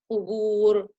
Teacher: I lifted the ra because of the pesh that's before the waw sukun